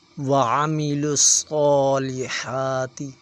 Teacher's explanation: صاد موٹا حروف ہے، اسے موٹا پڑھیں گے، اگر اسے باریک پڑھیں گے تو سین کی آواز نکلے گی ، اس لیے یہ موٹا حروف ہے، اسے موٹا پڑھا جائے۔ · حا کے اوپر بھی کھڑی زبر ہے، حا باریک ہے، باریک پڑھا جائے گا